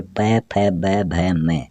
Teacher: फिर प, फ, ब, भ, म, ये 5 जो वर्ण हैं ये ओष्ठ वर्ण कहलाते हैं। इनको हम उच्चारित करते हैं तो अपने ऊपर वाला होठ और नीचे वाला होठ दोनों मिलकर ये उच्चारित होते हैं